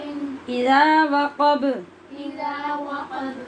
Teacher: زال میں سیٹی کی آواز پیدا نہیں کرنی